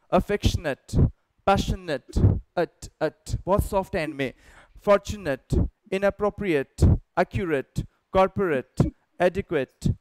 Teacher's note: लेकिन जब ये noun है या adjective है तो associate, affectionate, passionate, बहुत soft end में, fortunate, inappropriate, accurate, corporate, adequate, right, ये आपको ध्यान रखना है। तो जब कभी भी वो संज्ञा होगी या विशेषण होगा तो आप इसको अट की ध्वनि से खत्म करेंगे